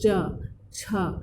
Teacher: तो आप जब भी ध्यान देंगे च छ, तो जीभ कहाँ टच हो रहा है? ऊपर की ओर, तालु की ओर टच हो रहा है, तो इसका उच्चारण स्थान तालु हो गया।